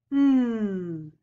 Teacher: taking the tip of your tongue and touching the bump in the back of your front teeth, and you're blowing the air out through your nose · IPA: /n/